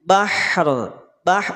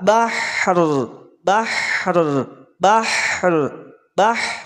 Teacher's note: ujung lidah tempelkan ke gusi kemudian angkat pangkal lidahnya untuk menandakan adanya bunyi tebal pada huruf ro